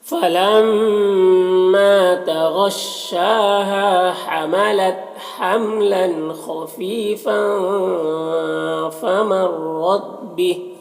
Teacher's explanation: فاں کے تنویر میں اخفا ہو رہا ہے. تنوین کی آواز کو ناک میں چھپا کر پڑھیں گے